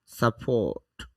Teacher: সাপোর্ট, এখানে র দেইনি কারণ র এর উচ্চারণ হবে না